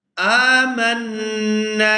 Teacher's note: مَن يَقُولُ آمنا، یہاں الف کے اوپر کھڑی زبر ہے تو الف کے اوپر جب بھی کوئی حرکت آ جائے تب الف جو ہے وہ حمزہ کے اندر کنورٹ ہو جاتا ہے۔ یہاں حمزہ کو کھینچ کر ادا کریں گے اور آگے نون مشدد پر غنہ کیا جائے گا